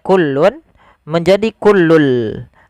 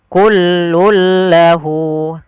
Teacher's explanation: kita masukkan tanwinnya ke huruf lam. Awalnya kullun menjadi kullul. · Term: idgham bila gunnah